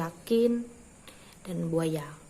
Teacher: terjadi apabila artikulator aktifnya adalah tengah lidah dan artikulator pasifnya langit-langit keras maka bunyi yang dihasilkan adalah huruf y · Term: semivokal media Balad Al